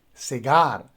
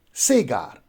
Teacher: you see that the stress goes on the second syllable so we say cigar rather than sega similarly we have another